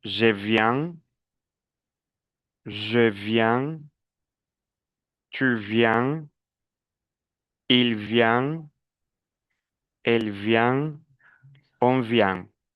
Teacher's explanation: La prononciation, n'oubliez pas la nasalisation EN, nasalisation en.